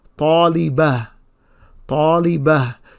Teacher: you can hear that ha sound at the end, but it's not a very strong ha sound